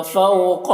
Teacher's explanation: فوقہ میں واو جو ہے، اس واو کو واو لین کہتے ہیں، اسے نرم آواز کے ساتھ جلد پڑھنا ہے۔ قاف کو پر پڑھنا ہے، حروف مستعلیہ میں سے ہے۔